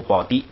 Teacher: 那个提在第2音节就不送气了，所以读低